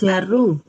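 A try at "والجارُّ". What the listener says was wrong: Wajaru. Kan ada alif lam. Ada alif lam. Wajaru.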